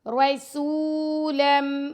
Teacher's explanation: را کو موٹا پڑھیں گے، سین کو باریک، اور سین کے ساتھ واو مدہ ہے تو سین کو 2 سیکنڈ تک لمبا کر کے پڑھیں گے۔